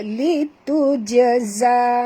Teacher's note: huruf jim ini mati di tengah-tengah kalimah, kita kena lantunkan dia